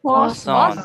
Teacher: So don't say the t at the end.